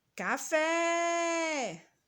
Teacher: A sílaba que nós demoramos mais pronunciando foi o fé. O fé é a última sílaba da palavra, portanto, ela é oxítona.